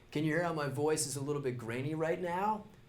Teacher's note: California accents in general are famous for vocal fry, which is the sound your voice makes when you kind of let it sit in your throat.